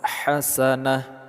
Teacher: huruf ta marbutah kalau berhenti atau kita sukunkan dia menjadi huruf ha, tapi kalau lanjut dia tetap menjadi huruf ta.